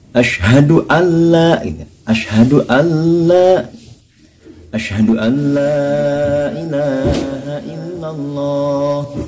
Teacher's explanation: Terkadang kita juga pernah mendengar ketika melafadzkan asyhadu alla ilaha illallah dan asyhadu alla ilaha illallah, itu ada aja yang seperti ini, asyhadu alla, nun matinya tidak dimasukkan ke lam, itu salah besar. Harusnya langsung nun mati dimasukkan ke lam. Jadi suara nunnya tidak ada, masuk ke huruf lam. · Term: idgham bila guna